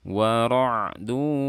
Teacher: di sini ada ain sukun bersifat bainiyah, alirkan suaranya sedikit.